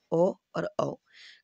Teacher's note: ओ और औ बिल्कुल कंठ से बोले जाते हैं आप बोलकर भी देख सकते हैं ओ और औ कंठ बिल्कुल